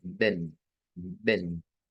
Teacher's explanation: la W se convierte en V, E abierta y N